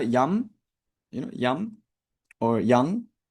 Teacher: You know, yum or yang like that. Just a kind of anusara sound like a nasalized sound.